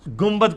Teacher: نون ساکن کے بعد جب کبھی بھی با آ جائے تو وہ میم سے بدل جاتا ہے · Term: اقلاب